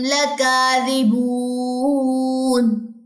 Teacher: لکاذبون میں ہم نے نون کی زبر گرا کے وقف کیا ہے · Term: وقف بالسکون